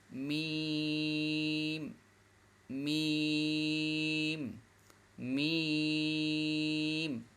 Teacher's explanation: এখন মিম উচ্চারণ করার সময় 2 ঠোঁট লাগবে, লম্বাও হবে। মিম মিম মিম, এখানে এই 2টা ঠোঁট আছে, 2টা ঠোঁট লাগবে।